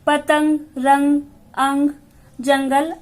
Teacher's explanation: इसका उच्चारण नाक और मुंह की सहायता से होता है। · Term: अनुनासिक